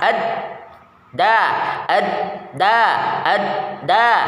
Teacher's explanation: tempelkan permukaan lidah bagian ujung pada akar dua gigi seri bagian atas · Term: huruf Dal